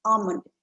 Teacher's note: l is kind of silent there you don't hear the l sound